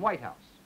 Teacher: white keeps its primary stress, but house goes down to tertiary